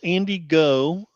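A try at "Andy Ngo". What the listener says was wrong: The G is silent. The G is silent.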